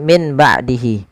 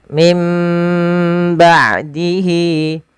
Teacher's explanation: Yaitu suara nunnya diganti dirubah menjadi huruf mim. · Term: iqlab